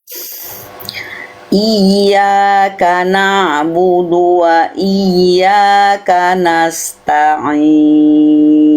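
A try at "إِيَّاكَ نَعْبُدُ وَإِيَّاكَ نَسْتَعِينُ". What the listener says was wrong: Keren, bagus, lanjut.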